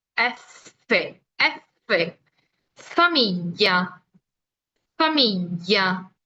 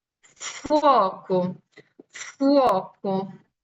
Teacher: el sonido se produce con el labio inferior que toca los dientes superiores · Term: labiodentales